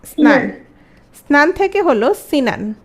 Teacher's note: স্নান থেকে সিনান, স্নান থেকে সিনান হচ্ছে মধ্যস্বরাগমের উদাহরণ।